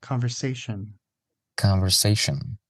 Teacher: the S in conversation is not voiced.